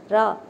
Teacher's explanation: நாவின் நுனி மேல் அன்னத்தின் மைய பகுதியை உரசுவதால் ரகரம் தோன்றுகிறது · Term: வல்லின ரகரம்